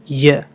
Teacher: Next ఇది చూడగానే మనకి జే లాగా అనిపిస్తుంది, బట్ దీన్ని య అని పలకాలి, య. ఓకే, ఇది ఒక ప్యాలటల్ కాన్సనెంట్. అంటే హార్డ్ ప్యాలెట్ దగ్గర ఉంటుంది. అంటే మన ఆల్వియోలర్ రిడ్జ్ అయిపోయిన తర్వాత బోనీ పార్ట్ అంటే గట్టిగా తగులుతుంది మనకి మధ్యలో.